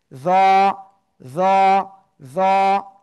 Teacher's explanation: জিহ্বার আগা সামনের উপরে দুই দাঁতের আগায় লাগাবো, লাগিয়ে একটু মোটা আওয়াজে একালিপটা নিয়ে উচ্চারণ করব।